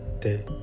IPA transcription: te